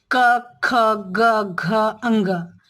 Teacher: जीभ का अंदर वाला भाग और तालु के भी अंदर वाला भाग जो है, वह जब स्पर्श होता है तब ये व्यंजन आप बोल सकते हैं। बिना स्पर्श के ये वाले व्यंजन हम नहीं बोल सकते हैं, जैसे कि आप बोल के भी स्वयं देख सकते हैं।